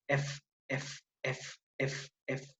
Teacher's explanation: el aire sale por una pequeña abertura en el punto de articulación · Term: fricativas o continuas